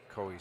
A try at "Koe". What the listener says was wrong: His last name is pronounced Kui. You're saying Koi.